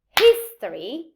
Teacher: i say history the stress is in his